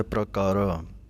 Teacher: ਗੁਨੀਆਂ ਦੇ ਉੱਤੇ ਵਿਸਰਾਮ ਹੈ ਅਤੇ ਪ੍ਰਕਾਰਾ ਪਾਠ ਪੜ੍ਹਨਾ ਹੈ, ਕਿਉਂਕਿ ਪੈਰ ਦੇ ਵਿੱਚ ਰਾਰਾ ਹੈ। ਪੂਰਾ ਰਾਰਾ ਨਹੀਂ ਬੋਲਣਾ, ਜਲਦੀ ਨਾਲ ਬੋਲਣਾ ਹੈ ਪ੍ਰਕਾਰਾ। ਇਸ ਤਰ੍ਹਾਂ ਇਹ ਸਹੀ ਉਚਾਰਨ ਹੈ।